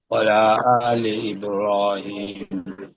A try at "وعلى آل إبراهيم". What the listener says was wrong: একটু টান দিয়ে পড়তে হবে।